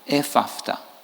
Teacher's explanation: le mot Ephaphatha, il est composé d'un grand nombre de labiales